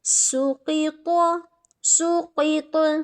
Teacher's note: جیسے اب ہم دیکھ لیتے ہیں، یہ پہلا لفظ دیکھ لیتے ہیں، یہ والا سین ضمہ سو، قاف کسرہ قی، سوقی، طاد فتحہ طا، سوقیط، سوقیط۔ اب دیکھیں سین سیٹی والا حروف، باریک حروف بھی ہے، قاف موٹا حروف بھی ہے، اور طا بھی موٹا حروف ہے